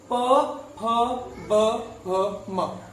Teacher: क वर्ग का उच्चारण कंठ से होता है, च वर्ग का उच्चारण तालु से होता है, और ट वर्ग का उच्चारण मूर्धा से होता है, त वर्ग का उच्चारण दंत से होता है, और प वर्ग का उच्चारण ओष्ठ से होता है